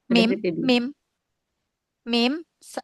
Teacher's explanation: Dari bibir. Nah, makhraj muhaqq mim ya itu dari bibir dari kedua bibir yang dirapatkan. Makhraj muqadarnya alkhaisyum karena huruf mim adalah huruf gunah gitu ya.